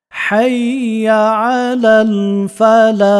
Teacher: তারপরে হাইয়া আলাল ফালাহ, হাইয়া আলাল ফালাহ, ফালাহ যখন বলবো তখন হাটা এখানে গলার মধ্যস্থল থেকে উচ্চারিত হবে, একটু বাতাস জারি থাকবে